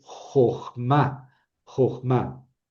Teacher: Aquí tenemos una sílaba cerrada sin acento. El acento cae en ma, ¿verdad? Ma.